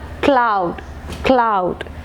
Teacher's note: So the velar sound k is the initial consonant.